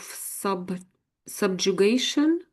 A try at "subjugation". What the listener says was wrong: Your pronunciation when you read it out was exact exactly how it said.